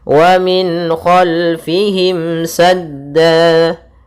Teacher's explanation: karena suara nunnya dibaca jelas dan datang setelahnya huruf-huruf halq, yaitu huruf yang kita keluarkan dari tenggorokan kita. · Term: izhar halqi